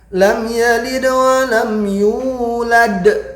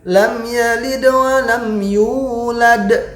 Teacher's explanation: Jadi yang jelas intinya perbedaannya jelas, ada sughra, ada kubra. Jadi yang sughra di tengah-tengah ringan, kubra di akhir. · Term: qalqalah